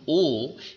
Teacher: তখন ও এটা উচ্চারণের সময় লক্ষ্য করে দেখো, ও যখন বলছো তখন ওষ্ঠ আর অধর কুঞ্চিত হয়, শ্বাসবায়ু আঘাত হানে